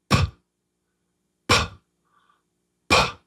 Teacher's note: There's no voice to begin with. There's just P, P. It's just air over your lips, air. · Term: puff